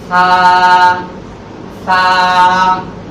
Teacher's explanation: এটির উচ্চারণের স্থান হচ্ছে জিহ্বার আগা সামনের উপরে দুই দাঁতের আগার সঙ্গে লাগাইয়া নরম আওয়াজ দিয়ে একালিক টেনে বলতে হবে